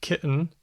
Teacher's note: there's glottal stop tea as in kitten